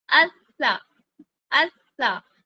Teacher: بیچ میں آواز رکی بھی تبھی پتا چلا کہ میں نے ایک ساکن ادا کیا اور ایک متحرک ادا کیا. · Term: سختی